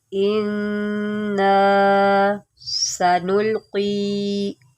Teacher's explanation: نون مشدد ہے، یہاں پر غنہ کریں، انا سنلقی، سین کی سیٹی نکالیں، سنلقی، قاف کو موٹا کریں، سنلقی، انا سنلقی۔